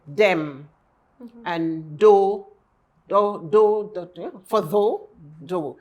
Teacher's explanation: hard TH is pronounced D